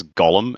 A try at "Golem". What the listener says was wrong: It sounded like you said. Honestly, it sounded like you said Golo, and then I thought you said Goro, and I was like, "But Goro's not in Lord of the Rings." I'm really confused.